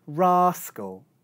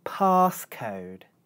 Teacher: in the second example there's an aspirated consonant.